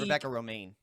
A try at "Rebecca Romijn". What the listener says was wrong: You don't say it Romaine. You can't say it Romaine. It's Romijn. It's spelled Romijn.